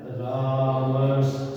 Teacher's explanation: दंती से की जगह तालव्य श हो जाता है। तो यहाँ इस से की जगह तालव्य श हो गया, मिलाने पर रामश्च।